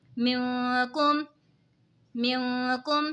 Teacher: मिनकुम, मिनकुम, नून साकिन है, नून साकिन के बाद हुरूफ़े इक़फ़ा का काफ़ आ रहा है तो इक़फ़ा होगा यानी गुन्ना करके पढ़ेंगे